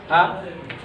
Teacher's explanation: ना आगे जा रही है जीभ, ना पीछे जा रही है। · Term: मध्य स्वर